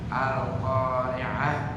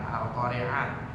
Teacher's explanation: Setiap ta marbutah ta yang yang di bawah itu yang di belakang kalau mau berhenti maka berubah menjadi huruf ha